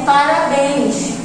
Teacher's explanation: Sílaba tônica é a última, termina em ens.